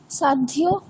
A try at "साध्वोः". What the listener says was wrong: সাধ্বোঃ। এটা ইয়কারের মতো শুনতে লাগছে, ঠিক আছে? ওকার হবে, সাধ্বোঃ।